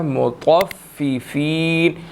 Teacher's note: طا کو ہم نے موٹا ادا کرنا ہے، ٹھیک ہے، اور طا نے فا کے ساتھ ملنا ہے، مطففین، اور فا بھی یہاں پر دو ہیں۔